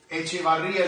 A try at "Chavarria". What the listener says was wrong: No, it's not Echevarria, it's Chavarria. Without the E.